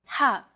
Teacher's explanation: the letter ha is pronounced deep in the throat